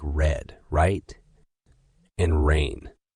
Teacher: R is pronounced by curling the tongue slightly back without touching the roof of the mouth